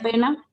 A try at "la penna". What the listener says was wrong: la penna. Atención a duplicar esa N. La penna. Porque si decimos la pena, estamos diciendo la pena en serio, no el sufrimiento, el dolor.